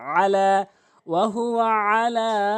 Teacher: ওহুয়া আলা বলে এই আইনের জায়গায় হামজা উচ্চারণ করে ভুল উচ্চারণ সঠিক সঠিক উচ্চারণ হচ্ছে আইনটি হলকের মাঝখান থেকে আইন জবর লাম খানা জবর লা এক আলিফ টেনে উচ্চারণ করবেন